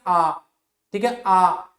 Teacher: ठीक है, तो उसको क्या कहा जाता है? विवृत कहा जाता है, जब मुख सबसे अधिक खुलता है। जैसे हमने उच्चारण किया आ, ठीक है, आ, तो मुख खुला तो जीवा भी अपने मूल स्थान से ऊपर उठी। · आ तो मुख खुला तो जी्हा भी अपने मूल स्थान से ऊपर उठी। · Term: विवृत स्वर